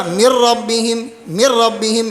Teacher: نون کے اندر جو صفت غنہ ہے وہ باقی نہیں رہا، مکمل ادغام ہوا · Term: ادغام تام